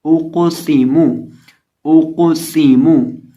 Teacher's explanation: अब यहाँ कौफ हरूफ कलकला में से है, साकिन है, और इसी तरह मोटे हरूफ में से भी है, तो इसको हिलाएंगे भी और मोटा भी करेंगे। और इसी तरह हमजा को पढ़ते वक्त होंठों को गोल करेंगे क्योंकि हमजा के ऊपर पेश है · सीन को सीटी की आवाज़ पैदा करके पढ़ेंगे · कौफ को मोटा भी करेंगे प्लस हिलाएंगे भी